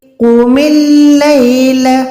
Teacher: قوف جو ہے 2 نقطوں والا موٹا قوف ہے، تو اس کی ادائیگی کرتے ہوئے منہ کو گولا ہی کریں، قوف کی پراپر آواز دیں۔